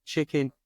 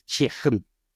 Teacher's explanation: The hard K, the glottal sounds that come from the back of the throat in words, you use the perfect example, chicken.